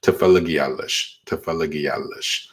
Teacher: when you say it fast enough, you'll notice that a Y sound kind of comes up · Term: glides